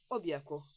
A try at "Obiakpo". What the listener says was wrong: Au fait, ta façon de dire Obiakpo, tu sais, j'aimerais que tu utilises une voix un peu plus romantique pour prononcer ce Obiakpo. Pas Obiakpo comme si on allait à la guerre. Obiakpo.